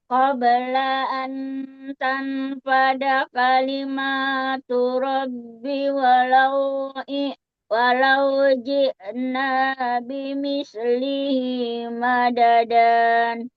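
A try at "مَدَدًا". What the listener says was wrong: Madada kalau wakof bukan madadan tapi madada menjadi mafirat.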